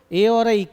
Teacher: ए और आई कंठ प्लस तालु,